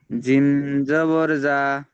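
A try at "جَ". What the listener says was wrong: জিমের টানটা হয়নি। জিম জাবার যা।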